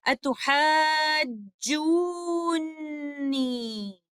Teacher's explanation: Both of the letters are mutaharrik, but due to ease of pronunciation, the first letter noon acquires a sukoon and merges into the second letter noon. This idgham is idgham kabir.